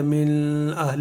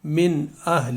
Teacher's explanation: نون ساکن کے بعد اظہار کا حرف حمزہ ہے تو یہاں پر اظہار کا قاعدہ ہوگا، تو لہٰذا اس میں کبھی بھی غنہ نہیں کرنا، اور اس کو اس کے ساتھ زیادہ من اہل ایسے نہیں بولنا، بلکہ من اہل، یعنی صاف صاف واضح طور پر۔